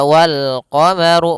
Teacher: runnya dibaca tebal karena dia huruf ra yang berharakat damah